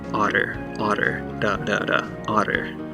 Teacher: in the middle of words we often uh turn it into a tap so it becomes a very short d like sound